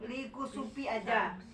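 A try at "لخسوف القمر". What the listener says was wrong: Ya, lihusupil komari. Sama itu juga disambung. Jangan dipisah. Lihusupil komari sama likusupis samsi. Ya, likusupis samsi sama lihusupil komari.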